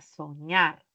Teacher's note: al separar enfatizo en la última sílaba, soñar. Es una palabra aguda, pero que terminó en consonante R y por esa razón no lleva tilde.